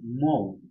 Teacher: দুটি স্বরধ্বনি হচ্ছে ও আর হর্ষ উ। এই দুটি স্বরধ্বনির যোগ ঘটেছে। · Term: পূর্ণস্বর